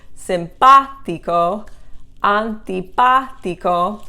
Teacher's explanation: the accents on both of those two is on the third to the last syllable